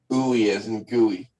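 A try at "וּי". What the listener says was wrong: Ooey as in gooey. Very good. Or as in fooey.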